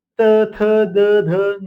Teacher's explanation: त थ द ध न. जीभ ही दाताला लागते.